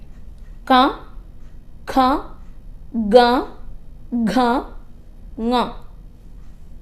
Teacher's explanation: കണ്ഠം ഉപയോഗിച്ച് തൊണ്ട ഉപയോഗിച്ച് ഉച്ചരിക്കുന്നവ എന്ന് പറയാം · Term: കണ്ഠ്യം